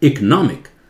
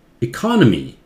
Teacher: नॉन जोर से इकोनॉमिक